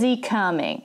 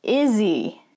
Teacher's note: in english so first one practice with me is he coming is and he are going to combine to izzy even when the pronoun is at the beginning of the sentence